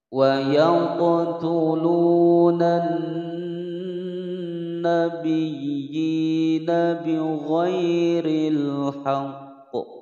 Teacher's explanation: Wa yaqtulunan, ada hukum al syamsiyah di sini, alnya tidak terbaca, langsung masuk dan ditekan kemudian ditahan pada huruf nun yang bertasydid selama dua harokat